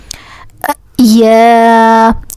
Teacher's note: This Ya originates when the tongue center region touching the hard palate.